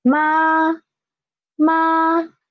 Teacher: so it is a level flat sound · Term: first tone